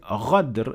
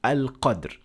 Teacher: But if we, for example, want to use, let's say, Sudanese dialects, and some of the dialects in Sudan, they turn qaf into ghain